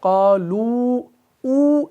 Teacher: लेकिन जब क़ालू पर वक्फ करते हैं तो क़ालू ऊ यानी खींचा जाता है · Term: वक्फ बिल इस्बात